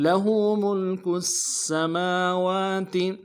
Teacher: سین کی سیٹی باریک ہوگی ، میم کے اوپر کھڑا زبر ہے، ایک مقدار میں کھینچیں